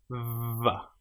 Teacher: The letter or the sound VV is created with your top teeth on your bottom lip. Vv. And you can feel the vibration going on here.